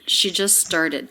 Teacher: the t has dropped this is really common with the st cluster at the end when the next word begins with a consonant we tend to drop the t just started so the two